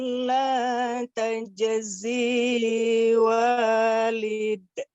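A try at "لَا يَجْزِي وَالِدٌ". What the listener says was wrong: La yajzi walid. La yajzi, huruf iya, Bu. La yajzi.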